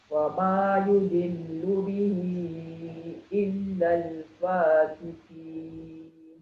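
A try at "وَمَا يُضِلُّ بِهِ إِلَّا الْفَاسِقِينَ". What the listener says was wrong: Fasiqin. Qaf tebal sikit lagi.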